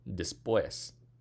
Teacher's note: it ends with the S, the stress should fall on the des, but it doesn't, it falls on the pues